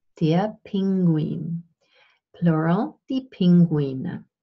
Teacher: So we start out with the bilabial, the voiceless bilabial plosive P, as in der Pinguin